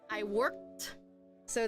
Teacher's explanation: this ed sounds like a T.